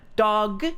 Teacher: holding the G sound at the end of the word dog